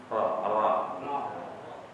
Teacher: yang agak berat karena ro karena lidahnya harus naik